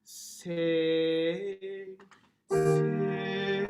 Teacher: And I want you to make sure that you don't close to the NG, but that you elongate that I vowel as long as possible. Not in the back of your throat like, but sing.